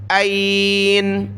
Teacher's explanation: حمزہ یا زبر ای، نون زبر نا، این این، جب رکے وقف کیا تو آخری حرف نون پر سکون آ جائے گا، وقفن این۔ حمزہ ہے، حمزہ کو گلے سے نکالے، عین کو نہیں پڑھنا، یعنی یہاں عین نہیں پڑھنا بلکہ حمزہ پڑھنا ہے، این۔